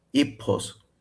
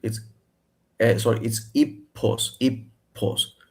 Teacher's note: It's aspirated like English, but it's also long.